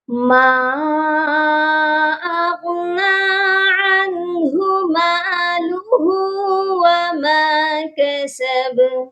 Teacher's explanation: با پر ہم قلقلہ کریں گے کیونکہ با حروف قلقلہ ہے